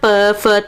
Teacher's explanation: जैसे अपन बोलते हैं ना प फ, तो हमारे क्या है? होठ टच होते हैं ना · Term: ओष्ठ